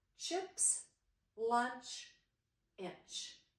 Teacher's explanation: your tongue is right behind the top teeth. You hold your air for 1 second and then you let a quick burst come out. And when you do that, it makes the ch sound. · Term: digraph CH